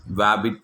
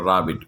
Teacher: sound like they are making a W sound for an R sound, that is wabbit for rabbit, okay.